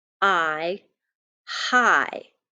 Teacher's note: my vowel sound is going to be long and my syllable is open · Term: open syllable